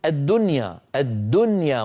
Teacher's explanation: العرب تقول من يعمل، العرب تقول من ولي من، ولكن إن اجتمعت النون والواو أو النون والياء في كلمة واحدة فلا يفعلون ذلك. يعني العرب تقول الدنيا، الدنيا مظهرة النون، ولا يقولون الدنيا، مع أنه قد اجتمع في النطق نون ساكنة بعدها ياء.